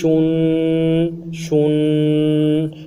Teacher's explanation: اب دو پیش پڑھتے ہوئے تنوین کے ہونٹوں کو گول کریں گے، اور گول کرنے کے بعد اخیر میں ہونٹوں کو پھر سیدھا کریں گے، غنّے کے ساتھ سیدھا ہو جائیں گے۔